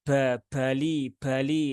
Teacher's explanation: semacam dorongan udara yang kuat